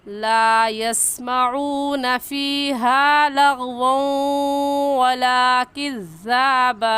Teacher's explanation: तनवीन के बाद हुरूफ़ यरमलून में से वाव आ गया है तो यहाँ पर गुन्ना इदगाम के साथ करेंगे · और इदगाम कहते हैं कि 2 लफ्ज़ों को एक कर लिया जाए। जैसा कि वाव देखने में एक है और पढ़ने में 2 मरतबा पढ़ा जाएगा, एक मरतबा पीछे वाले लफ्ज़ के साथ मिलाकर और दूसरी मरतबा ख़ुद